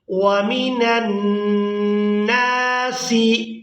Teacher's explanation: نون کو الف مدہ کی وجہ سے کھینچ کر ادا کریں گے اور یہاں نون مشدد پر غنہ بھی کیا جائے گا